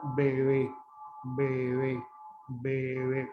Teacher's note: La primera sílaba, el sonido es fuerte y oclusivo, B, B, B. Pero en la segunda sílaba, el sonido se relaja, es decir, la B pierde fuerza, pierde oclusividad y se fricativiza. Entonces, se escucha bebé, bebé, bebé.